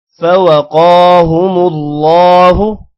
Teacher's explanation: لمبا نہیں کرنا دونوں میں سے کسی کو بھی. قو کو موٹا بھی کریں گے، لمبا بھی کریں گے. ہم اللہ اللہ کے نام کو موٹا کرنا ہے، ہو کو لمبا نہیں کرنا.